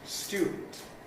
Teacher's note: semivowel j plus uː in <student> ˈstjuːdn̩t